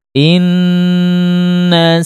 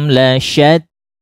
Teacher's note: mim sukun bertemu dengan huruf lam tidak boleh didengungkan tapi juga tidak boleh diputus tidak boleh disaktah tapi disempurnakan saja mim sukunnya inakum [Musik] inakum